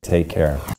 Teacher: the American English tea is pronounced with the tongue tip very close to the Upper Front Teeth rather than farther kind of behind near that alve Ridge or · Since take ends in a k sound and care starts in the same k sound, to link them together, they become one single pronunciation rather than 2 k sounds. · this is a vocalic air feel the bowl shape on your tongue for the r in air